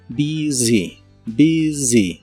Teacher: Y usaremos la palabra busy, que significa ocupado, atareado, o si hablas de un lugar puede ser concurrido o con mucho movimiento. La U de esta palabra se pronuncia como I corta y la S se pronuncia de manera vibrante como si fuera la Z inglesa.